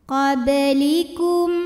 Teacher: Kemudian ada hukum qalqalah sugra, karena ada huruf ba yang sukunnya asli dan ada di tengah bacaan. Dibacanya memantul dengan pantulan yang kecil.